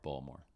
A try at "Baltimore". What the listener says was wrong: Ugh, Baltimore. It's like, why are you swallowing the letters? Say them. Baltimore. Baltimore.